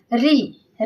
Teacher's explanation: ऋ का उच्चारण स्थान क्या है? तो मूर्धा है।